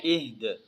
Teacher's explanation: وقف کی حالت میں دال کو ہلانا ہے، ٹھیک ہے، کیونکہ یہ حروف قلقلہ میں سے آتا ہے